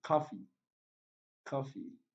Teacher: Bottle, primary stress on the first syllable. Coffee, primary stress on the first syllable.